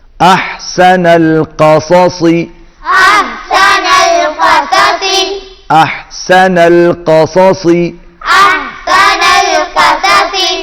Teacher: 2 مرتبہ صاد آ رہا ہے، دونوں مرتبہ آپ موٹا پڑھیں گے۔